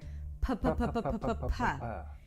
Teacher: We're going to start with a P- sound where you bring the lips together and release air.